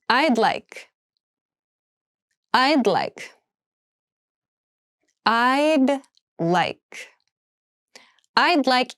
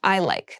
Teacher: make sure that you say I with that D sound this is the reduced form of I would like it's a polite way to say I want something but many